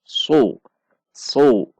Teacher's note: Dibaca dengan menegangkan pangkal lidah supaya pangkal lidah kita naik ke atas dan huruf menjadi tebal. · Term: huruf shad